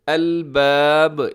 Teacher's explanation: اس میں جب وقف کریں گے با کے اوپر تو یہاں پہ با قلقلہ ہوگا۔